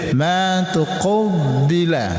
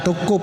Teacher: Ini ada qaf bertasdid dengan va ya tuqubila. Jadi huruf qaf, huruf di pangkal lidah. Kemudian bertasydid dengan huruf ba, huruf bibir.